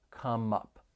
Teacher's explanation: we can link the final consonant sound in come with the beginning vowel sound in up